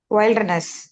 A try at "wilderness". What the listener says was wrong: அப்படி உச்சரிச்சிடக்கூடாது. அது வைல்டுன்னு படிச்சுங்க, இது எப்படி பாருங்க? வில்டர்னஸ்னு படிக்கணும். வைல்டு வில்டர் சுருக்கி.